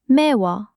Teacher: First, the ㅂ drops. Second, 우 takes its place. Third, 우 and ㅓ combine into 워.